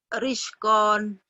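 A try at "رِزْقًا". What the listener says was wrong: Rizkon. Rizkon. Jangan panjang. Rizkon. Rizkon.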